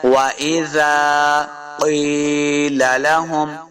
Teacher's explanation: دو نقطوں والا قاف ہمیشہ موٹا پڑا جائے گا، قاف زیر یا یہ مدہ ہے، دو حرکات لمع کرنا ہے۔